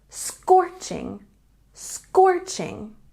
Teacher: And scorching has a stress on the first syllable.